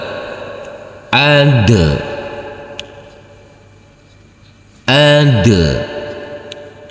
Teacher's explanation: huruf Dal yang bersukun ini harus kita pantulkan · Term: Qalqalah